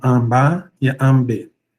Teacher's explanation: Mas na pronúncia a gente tem realmente o M, e aí o A acaba se nasalizando, tá? Então, Amba e Ambe, né? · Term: A nasal